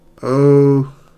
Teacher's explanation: The lips are rounded and your tongue is in the mid back.